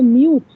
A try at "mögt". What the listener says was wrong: Mög, mög, mög, nicht U. It's not U with Umlaut, das ist nicht U mit Umlaut, O. Mögt, nicht mögt. Hier gibt es O und hier U.